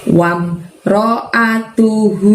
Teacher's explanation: Di ayat yang keempat diawali dengan lafadz wam ro'atuhu, pendek semua kecuali hu-nya. Hu-nya panjangnya 2 dan hu-nya dari tenggorokan bagian bawah, ngeluarin suaranya.